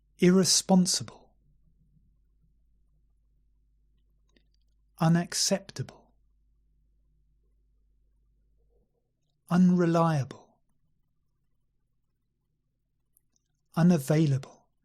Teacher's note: So we have a little stress on the first syllable and the main stress on the third syllable.